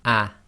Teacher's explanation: the sound preceding it, in this case the ah sound, is going to be cut short because the Hamza is the glottal stop. So normally this Hamza on top of the Alif with the Fatha would be ah.